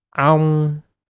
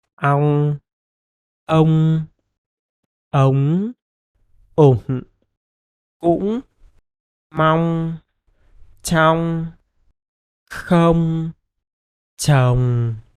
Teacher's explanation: When the ng follows vowels like o, o, u, you have to close your mouth at the end of word with puffy cheeks, like ong, In other situations like ang, uong, etc., your mouth is opened at the end of word, like when it occurs at the beginning of the word. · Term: ng endings